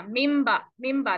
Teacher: अच्छा, अब जब मीम आ गया आपके पास, तो मीम के लिए और बा के लिए आपने पहले मीम के लिए क्या किया, दोनों होंठों को एक ही दफा बंद किया, इदगाम की तरह बंद कर देंगे, यानी मिला देंगे, तो हम कहेंगे इदगाम हो गया।